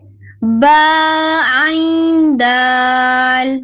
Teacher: حلق کے درمیان سے عین اور آخر میں دال ہے